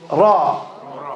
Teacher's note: The tip of the tongue should be on top of the palate. Ra, it's heavy.